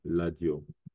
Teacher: en lingala, la lettre R se prononce L.